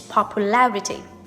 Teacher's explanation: the word stress changes to the 3rd syllable, which is popularity